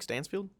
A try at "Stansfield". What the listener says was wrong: I think you're saying Steinsfield. Steinsfeld. Something Stein.